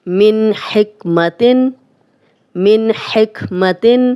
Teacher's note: من نون جزم والا، آگے ہا آ گیا تو ہم غنہ نہیں کر رہے۔